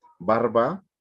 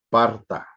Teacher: En este caso es una lengua originaria de aquí de México, pero también pasa lo mismo por ejemplo, en el finlandés, que ellos no tienen sonidos como B, D, G, y toman préstamos germánicos B, D, G, y fueron sustituidos por P, T, K